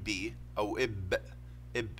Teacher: في بعض الاصوات يعني في فايبريشن بحصل في الحبال الصوتيه يعني اهتزاز عندما ننطقها زي البي فهذا بسميه فويست واذا لم يحدث اهتزاز بسميه هذا فويسس يعني · النطق الشفتين هذا ستوب اووف يعني انفجاري هذا الصوت تقول يعني كانه صار اغلاق تام للشفتين بعدين فجر الصوت عندما تخرج الصوت